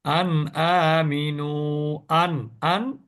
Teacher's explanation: আন কে স্পষ্ট উচ্চারণ করলাম কোন গুণনা করলাম না